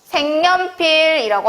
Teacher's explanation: 그래서 니은 첨가랑 비음화가 일어났습니다